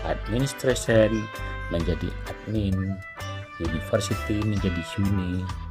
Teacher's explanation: penghilangan bunyi berupa kompresi, yakni dengan penghilangan satu atau beberapa silabel di akhir, dari akhir atau tengah kata.